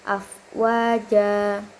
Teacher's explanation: Yang pertama itu mad thobi'i. Karena huruf wau fathah bertemu alif dan cara dan cara bacanya juga dipanjangkan sebanyak dua harakat.